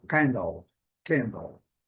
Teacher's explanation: Mesma coisa, candle, letra E não é pronunciada. A primeira sílaba é a sílaba forte, nós estamos vendo aqui, e o A recebe o seu som puro.